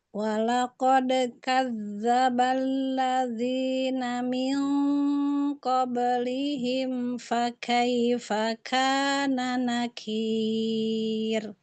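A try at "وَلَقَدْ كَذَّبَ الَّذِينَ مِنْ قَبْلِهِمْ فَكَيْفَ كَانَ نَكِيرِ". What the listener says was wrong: dalalnya e kurangin enggak? Jangan dibanting.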